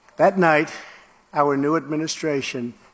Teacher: In the word new, Brits will tend to pronounce a y sound here, new. But Americans don't. They've dropped the yod.